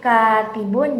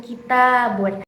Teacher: Bu dalam dua contoh kalimat ini memiliki perbedaan dalam tekanan yaitu pada lafaz k tibun tekanannya terdapat pada huruf kaf-nya sedangkan pada lafaz kitabun itu terdapat tekanan pada huruf t-nya